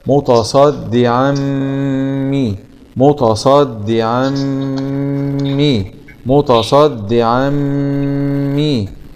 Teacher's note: عين فتحتين مع الإدغام بغنة في الميم المشددة مع الكسر